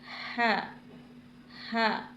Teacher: اس ہا کو حلق کے درمیانی حصے سے ادا کریں گے۔ ہا، یعنی جب زبان کی جڑ اوپر کوے یا لحد سے لگے گی تو یہ ہا ادا ہوگا۔ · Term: حروف حلقی